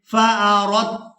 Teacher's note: را کو تا مشدد کے ساتھ ملانا ہے، دال ساکن کو چھوڑ دیں گے،